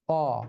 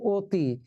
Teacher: অধ্বনি যখন অই থাকে তখন সে বিবৃত, আর অধ্বনি যখন ও হয়ে যায় তখন সে সংবৃত।